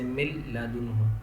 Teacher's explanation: نون ساکن کے بعد لام آ رہا ہے، یہاں بھی ادغام ہوگا، ملائیں گے لیکن گننا نہیں کریں گے